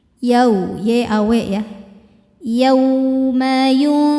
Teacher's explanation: Yau ada harfulin karena ada wau sukun sebelumnya fathah maka dibacanya lembut atau lunak